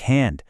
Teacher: H is super breathy